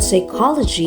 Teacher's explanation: It also explains why the word psychology is pronounced without P sound at the beginning.